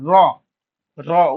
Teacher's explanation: র ধ্বনি উচ্চারণের সময় কি হয় অগ্রভাগ তোমার কম্পিত হয় কি বলা হচ্ছে অগ্রভাগ কম্পিত হয় কোনটার অগ্রভাগ কম্পিত হয় আমাদের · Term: কম্পন জাত ধ্বনি